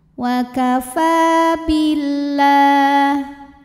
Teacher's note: mad tabi'i dhahiri karena ada fathah panjang di atas huruf fa, panjang bacanya 2 harokat